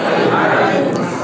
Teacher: যেখান থেকে আমরা হা টা উচ্চারণ করছি হলকের মধ্যখান থেকে ঠিক একই জায়গায় থেকে আইন উচ্চারণ হবে